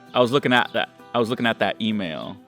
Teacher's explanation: Someone at work said the other day that I dropped the T in at.